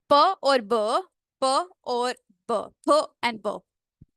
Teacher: ठीक है, let's suppose अगर ठीक हो गया, पफ और बर्स्ट ऑफ एयर। प एंड ब, ये बाइलेबियल प्लॉजिव्स हैं।